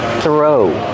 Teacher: The TH makes a voiceless sound, just air. Throw. Link the sound to the R.